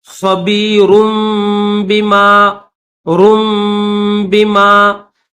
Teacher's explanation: इन्नल्लाह खबीरुम बिमा, खबी, ख्वा के ऊपर जबर है, बायाजिर भी, खबी, रा के बाद जो है रा के ऊपर दो पेश है, एक ये सीधा पेश और एक उल्टा पेश, और उसके साथ ये छोटा सा मीम भी आपको दिख रहा है। तो रा के बाद मीम की आवाज निकालकर फिर बाकी आवाज निकालेंगे